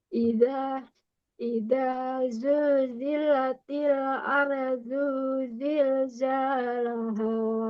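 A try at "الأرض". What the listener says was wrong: nah, do-nya kurang ke dalam, kurang tebal ya. Ardu, du. Jadi ke tebal. Kalau ardu, ardu, ardu. Lidahnya ditempelin ke langit-langit. Ardu.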